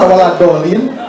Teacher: dia sebenarnya sedang mengucapkan huruf dal, tapi dimonyongkan waladolin. Al-waladolin itu berarti ujung lidah mengarah ke langit-langit, cuma dimonyongkan bibirnya, sehingga waladolin.